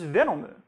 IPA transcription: venomɯ